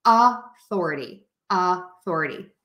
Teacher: For authority, we're going to use that schwa, that ah sound, because that is the unstressed syllable. So we make that vowel shorter, softer, and lower in pitch. So you have authority, authority.